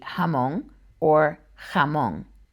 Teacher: La letra J can sound either like an H or a harsher H.